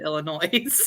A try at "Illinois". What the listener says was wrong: There's no noise in Illinois. I heard you say Illinois.